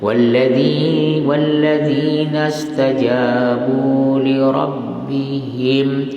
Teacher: mim jangan dengungkan, izhar syafawi